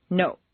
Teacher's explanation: in Spanish or Japanese, the word note is to our ear clipped or abbreviated